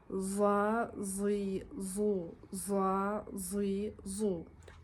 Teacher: Толықтай тіл артқы тістің артына тию арқылы дыбысталады екен. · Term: За әріпі